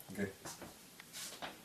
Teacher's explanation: Г, передняя. Смыкание на этом уровне, середина языка и середина неба.